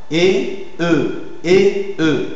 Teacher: Antérieure, voyelle antérieure, mi-fermée, arrondie. Voyelle, donc, orale, évidemment, orale, antérieure, mi-fermée, arrondie.